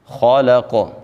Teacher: ما، جب الف سے پہلے والے حرف کے اوپر زبر آ جائے، الف مدہ ہوتا ہے، تو الف مدہ کو بھی ہم نے ایک الف کے برابر لمبا کرنا ہوتا ہے۔ خالق، خا کو بھی موٹا پڑھیں گے اور آگے قاف آ رہا ہے، قاف کو بھی ہم خوب موٹا پڑھیں گے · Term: موٹے حروف